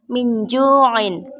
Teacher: nun mati bertemu dengan huruf Jim cara membacanya samar-samar membentuk huruf Jim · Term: ikhfa Haqiqi